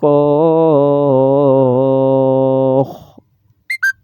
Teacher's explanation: ہم صاد کو خا سے ملائیں گے، صاد موٹا پڑھیں گے ، صاد الف خا زبر، صاد الف خا زبر صاخ، خا